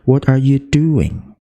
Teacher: itu nanti akhirnya di suku kata terakhir itu turun